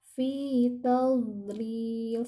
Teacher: bagian sisi lidah kita, baik kanan ataupun kiri, ditempelkan ke gigi geraham bagian atas. Fi tadlil, sehingga tidak memantul ya. · Jadi kalau masih tadlil itu salah. Harus dijaga supaya tidak memantul, karena dha ini bukan huruf yang ketika sukun dipantulkan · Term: huruf d